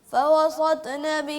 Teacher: سین کو بریک اور طا کو موٹا پڑھنا